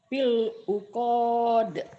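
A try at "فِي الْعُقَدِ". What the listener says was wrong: pendek ujungnya, fil uqad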